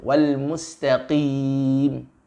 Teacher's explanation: tidak menyeret huruf ta kepada huruf qaf yang bersifat lebih tebal